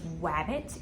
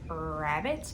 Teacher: phonological process which is a pattern that their speech follows where they're always substituting w sound for the r sound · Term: gliding